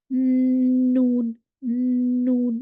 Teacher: जुबान आपकी ये ऊपर वाले ये दांतों के अंदर वाले हिस्से को टकरा रही है